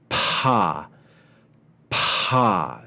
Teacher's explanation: the ha together make the sound PA ha so you see it's a combination of the PE which is pretty quiet with a a breath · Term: Digraph